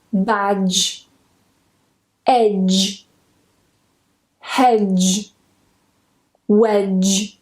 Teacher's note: So notice that I'm not trying to say wedge or anything like that. The D is completely silent. We go straight to that J sound.